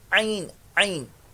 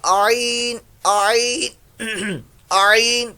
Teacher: آگے عین عین عین، با لوگ اس کو ایسے پڑھتے ہیں عین آ کی ساؤنڈ کے ساتھ اس کو لیتے ہیں، آ نہیں آئے گا، آپ کا ڈائریکٹ عین سے ہی شروع ہوگا